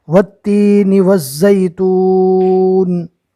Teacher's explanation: واو کو تا سے ملائیں گے اور تا کو ایک الف کے برابر کھینچیں گے، اس لیے کہ یہ یا مدہ ہے